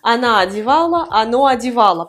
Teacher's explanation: ça se prononce également comme la forme au féminin anal anal parce que o sans accent tonique se prononce a